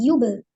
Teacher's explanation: ba sukun diqqolahkan Yub tidak boleh ada Hamzah sukun Yub tidak boleh dijedah y harus disambungkan karena hukum ee Qalqalah